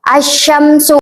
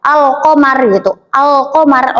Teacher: Jadi si lamnya ini nggak usah dibaca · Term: alif lam syamsiyah